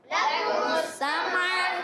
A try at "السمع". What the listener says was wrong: لکم السمع۔ بعض بچے بڑے جو ہے سین، یہ میم کو جو ہے سین کے بعد جو میم آ رہا ہے اس کو ہلاتے ہیں۔ سمع، سمع نہیں پڑھنا، سمع،